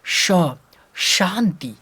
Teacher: ये जो तलाभ्य श ना, इसका उच्चारण का है, ये दांत, इसके पीछे मूर्धा, इसके पीछे तालु। जब भी इसका उच्चारण हम करते हैं तो जीभ को तालु के पास लेके जाते हैं।